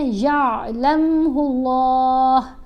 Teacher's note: اللہ کی لام کو یہاں پر موٹا پڑھا جائے گا کیونکہ ہا کے اوپر پیش ہے.